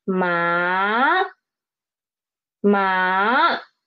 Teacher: So it is ma, ma. The pitch is rising up from 3 to 5. Ma, ma. This is second tone. · it started at pitch 2 and it dropped to the pitch 1 and then it rise up to pitch 5, pitch 4, more like pitch 4. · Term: third tone